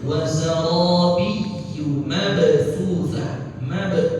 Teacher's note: ada qalqalah di situ. Qalqalah sugra ya.